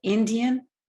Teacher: the e flows into the following nasal sound and in fact is nasalized say it's a nasalized vowel with egg glue the vowel is